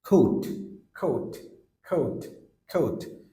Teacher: আমরা যেটাকে বলি খে খেই, বাট সাউন্ডে যখন আসতেছে ফনেমিক্সে তখন খেই হচ্ছে না, সাউন্ড হচ্ছে খ খ। মুখের খালি জায়গা থেকে খ একটা বাতাস বের হয়ে আসছে, খ। যেমন coat coat coat coat।